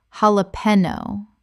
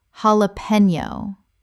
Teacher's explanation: The J makes an H sound in Spanish, and the N Y makes a knee sound.